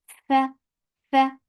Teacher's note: Fa has hams, so let the breath flow.